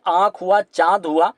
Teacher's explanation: वही अनुनासिक की बात करें तो जैसे आँख हुआ, चांद हुआ, यह स्वर होते हैं, इनका उच्चारण नाक और मुंह जो है दोनों से ही होता है।